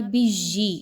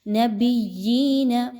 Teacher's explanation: وَيَقْتُلُونَ النَّبِيِّينَ، اب یہاں پہ بِجِّی، یہ آواز نہیں آنی چاہیے بلکہ آپ نے با اور یا کو مضبوطی کے ساتھ ملاتے ہوئے یا میں سیٹی کی آواز کو بالکل بھی نہیں لانا۔